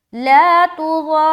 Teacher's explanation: अब यहाँ पर देखिए ला तुज़ार, ये मद्दे लाजिम का ये है, जब भी हर्फ मद के बाद वाले हर्फ के ऊपर सुकून या तशदीद आ जाए वो मद्दे लाजिम हो जाता है, ठीक है। आगे रा को मोटा भी रखना है और खींचना भी है 3 से 5 अलिफ के दरमियान